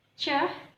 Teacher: produced by a stop cluster that is released with a lot of friction